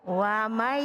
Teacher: Kalau dibaca idgham bighunah berarti melenyapkan nunnya ke huruf ya. Bacanya wamai bareng.